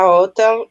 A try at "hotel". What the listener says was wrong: Important to say hotel because if not, it's an. You have to make the sound, the ha sound. Hotel, like hospital.